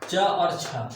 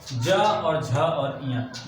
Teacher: च और छ हमारे अघोष हो जाएंगे, ज और झ और य ये तीनों हमारे सघोष वर्ण हो जाएंगे